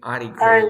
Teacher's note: when we have rt and a vowel sound you drop the T sound you drop you drop the T sound so we say articles